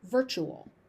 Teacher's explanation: that tu becomes a ch sound